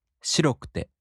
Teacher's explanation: In the downstep-type adjectives, the accent falls on the fourth to the last mora.